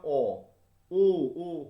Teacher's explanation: দেখো ঠোঁট সব গোল হয়ে আসছে। তাহলে যে স্বরধ্বনি উচ্চারণ করবার সময় ওষ্ঠ ফু দেওয়ার মতো গোল হয়ে বর্তুল আকার পায়, তাকে বলা হচ্ছে বর্তুল বা কুঞ্চিত স্বরধ্বনি।